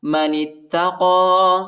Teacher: نون کو تا کے ساتھ ملائیں گے، تا پر شد آیا ہے، تا کو شدت کے ساتھ سختی کے ساتھ پڑھیں گے. قاف پر کھڑا زبر آیا ہے، اس کو ایک الف کی مقدار تک کھینچیں گے، ٹھیک ہے.